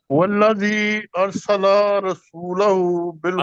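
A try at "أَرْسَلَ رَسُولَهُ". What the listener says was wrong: ارسالہ، لمبا نہیں کرنا، ارسالہ.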